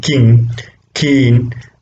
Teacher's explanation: you can really feel that the back part of the roof of the mouth is involved. Okay, so therefore they are called velar sounds in English.